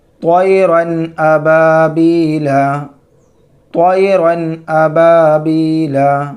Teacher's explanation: حمزہ حروف حلقی میں سے ہے، تو اب یہاں پہ تنوین کو توئرن، توئرن گنہ بھی نہیں کرنا، اخفا بھی نہیں کرنا، بلکہ نون کی آواز کو ظاہر کر کے، تنوین کی آواز کو ظاہر کر کے بلا غنہ کے جلد پڑھیں گے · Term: اظہار